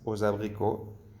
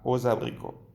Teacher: He dicho aux abricots como si fuera una sola palabra y como si la X fuera una S